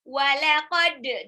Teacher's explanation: Walaqad, dalnya dipantulkan karena dia qalqalah ya